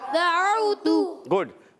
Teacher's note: واو ادا ہوتا ہے ہونٹوں کی گولائی سے. تا پر پیش ہے، حرکت ہے، اس کو بھی نہیں کھینچیں گے مگر ہونٹ گول ہو جائیں گے · عین کا مخرج ہے حلق کے درمیان والے حصے سے. واو ادا ہوتا ہے ہونٹوں کی گولائی سے.